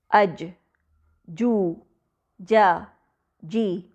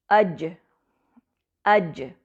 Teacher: जीम में पलटने की आवाज यानी कलकल भी है